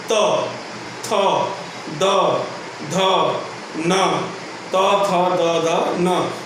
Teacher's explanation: जीवा है जाके सीधे दांतों में स्पर्श करती है, वह कहलाता है आपका दंत्य वर्ण।